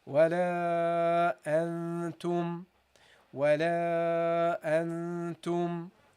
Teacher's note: And once you pronounce the noon and you pronounce a sound from al-khayshum, the nasal area, you produce a ghunnah, a prolonged ghunnah.